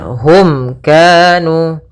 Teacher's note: ini kita namakan dengan izhar syafawi, yaitu suara mimnya harus dengan jelas, tidak boleh ditahan